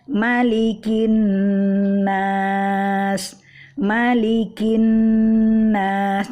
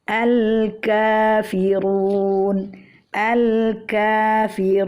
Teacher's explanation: Nah, di sini nampak kita bahwa pangkal lisan kita itu menyentuh sedikit daging lunak pada langit-langit dan juga menyentuh langit-langit keras yang di depannya ya. Jadi makhraj huruf kaf ini agak maju ke depan dari makhraj huruf qaf. Namun makhrajnya berdekatan, yaitu sama-sama di pangkal lisan